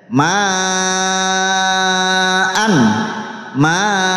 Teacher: hamzah fathaten jika wakaf menjadi fathah panjang walaupun akhirnya tidak ada alif